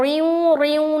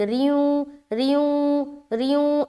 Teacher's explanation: را کو بالکل باریک رکھنا ہے. اب یہاں پر ریوں ریوں نہیں کرنا بلکہ باریک ریوں ریوں ریوں اس طریقے سے.